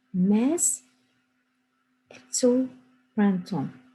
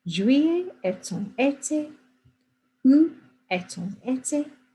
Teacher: I just wanted to tell you that when you say this verb here, sometimes without this, if I block this out if I can quickly, if this wasn't a vowel, you say e. But when it's followed by a vowel, you pronounce the T, so it becomes et.